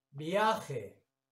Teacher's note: Nos damos cuenta de que al pronunciarla, viaje, la A es la vocal que suena más fuerte dentro de la sílaba tónica